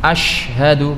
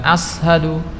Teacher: sifatnya itu adalah tafasyi jadi udaranya itu menyebar berbeda dengan huruf tsa